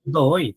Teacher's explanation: O ditongo aberto está no finalzinho da palavra.